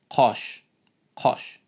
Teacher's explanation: the vowel O in Uzbek is like mid-back rounded vowel. It's not like A or O, it's between all of them.